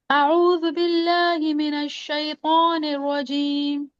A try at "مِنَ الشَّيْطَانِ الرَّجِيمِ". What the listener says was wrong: आप जो मिनश पढ़ रही है ना, इसमें मीम की जेर में पढ़ रही हैं आप, मेनश नहीं